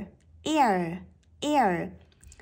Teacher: đó là nguyên âm đơn e và ờ nối vào nhau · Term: nguyên âm đôi